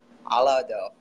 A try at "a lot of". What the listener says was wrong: At the end, alada. Open your mouth. Alada. So the of, instead of saying of like that, we say a lot of. Keep your mouth open. A lot of.